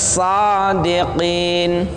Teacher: Jadi sin tapi lebih tebal dan berdesis. Sadiqin. Jadi ini juga bukan huruf yang diucapkan dengan bibir.